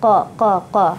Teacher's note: Makhrajnya huruf qaf, ya, makhrajnya di pangkal lidah